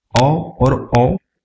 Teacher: जब हम ओ और औ का उच्चारण करते हैं तो इसमें कंठ और ओष्ठ दोनों का उपयोग हो रहा है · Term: कंठ ओष्ठ